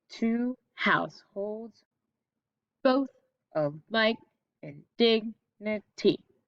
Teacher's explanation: iambic pentameter that it goes unstressed, stressed